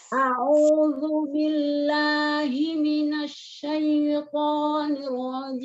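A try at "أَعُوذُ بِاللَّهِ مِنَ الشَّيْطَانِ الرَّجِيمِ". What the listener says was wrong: Ya jangan masuk ke hidung hamzahnya. A'udzu billahi minasy syaithanir rajim. Ya, sempurnakan ketika niar rajim itu jangan ragu-ragu ya, mau ke bawah apa mau ke atas gitu kan. Ni-nya dia turun dulu, nirwo tipis dulu baru tebal. Jadi jangan langsung nirwo begitu, tapi ni tipis dulu ya. Ya, sedikit.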